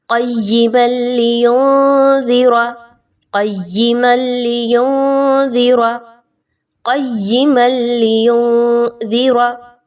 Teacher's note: उसके बाद नून साकिन के बाद दाल का हर्फ आ रहा है और दाल हुरूफ इख्फा में से है। आपने नून की आवाज़ को मख्फ़ी करना है, छुपाना है · मीम को लाम के साथ मिलाते हुए लाम के ऊपर रुका नहीं जाएगा, गुन्ना नहीं करना